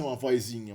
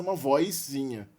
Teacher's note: Então, nesse caso, mesmo não sendo a sílaba tônica, a gente tem ainda a jotização, aí, a inserção do I, antes do som de Z